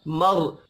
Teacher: रा साकिन से पिछले हर्फ के ऊपर जबर है, रा को पुर पढ़ेंगे।